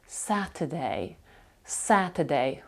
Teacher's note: оце е перше е під наголосом друге абсолютно не промовляється